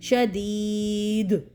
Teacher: عذاب شدید دال یاد دی یا مدہ اور شدید دال کے اوپر کلکلا کریں گے کیونکہ وقفی صورت میں اس کے اوپر کلکلا واضح ہو جائے گا